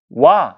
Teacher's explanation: 오 라는 입술 모양으로 준비를 했다가 아 라는 입술 모양으로 바뀌어 버립니다. 오 발음하다가 아로 바뀌었죠. · 그러니까 이 와라는 이 모음은 사실 오라는 모음과 아라는 모음이 합쳐진 거예요. 사실 얘는 반모음 오와 그 다음에 모음 아가 합쳐져서 이중모음이 된 거거든요